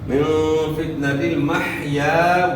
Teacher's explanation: حیا کو اپنے مخرج گلے کے درمیان سے ادا کرنا ہے